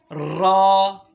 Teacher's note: زبان کا پش والا کنارہ جب اوپر مسوڑوں کے ساتھ ٹچ ہوتا ہے تو یہاں سے را ادا ہوتا ہے